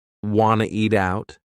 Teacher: You wanna eat out? Or we could cut off that first word, yeah, completely and just say, wanna eat out?